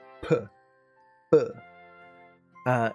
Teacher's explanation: And then with P and B, it's the closed lips, and then explosive. It's P, B. It's this explosive sound, and that's why you have, when you have microphones, a little spit guards there, because plosives like that will spike the mic.